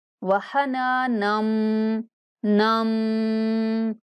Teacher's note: یہاں نون کو غنہ کے ساتھ میم سے ملائیں گے